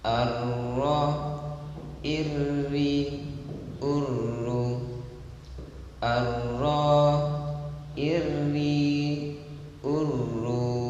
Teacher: 3. Terutama ketika dia bertanda tasydid, maka getarannya terdengar sangat dominan